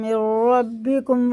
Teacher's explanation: اس نون کی جگہ را کو لگا کر پڑھیں گے